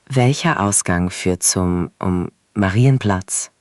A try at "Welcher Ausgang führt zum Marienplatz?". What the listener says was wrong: The rhythm was great, but let's clean up führt. It's führt with that German U sound. Push your lips forward like you're about to whistle. Führt.